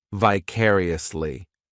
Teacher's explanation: This adverb has 5 syllables, and the stress is on that second syllable, vicariously. The third syllable, it's like that letter I just has that E sound, and the fourth syllable has the schwa,